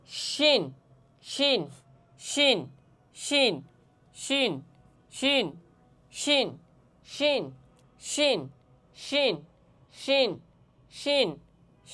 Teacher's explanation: জিহ্বার মধ্যখান, তার বরাবর উপরের তালুর সঙ্গে লাগাইয়া শিন হরফ উচ্চারণ হবে এবং জিম হরফ উচ্চারণ হবে